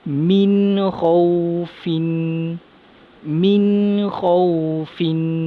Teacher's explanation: Yang kedua, nun mati bertemu kha dalam dua kalimah. Nun tersebut kita baca dengan izhar halki, jelas, nyata dan terang.